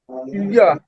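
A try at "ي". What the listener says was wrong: হ্যাঁ, একটু টান দিয়ে বলেন। হ্যাঁ, মাশাআল্লাহ, আপনার উচ্চারণ কিন্তু ঠিক ছিল, জাস্ট টানটা একটু আমি দিতে বলছিলাম।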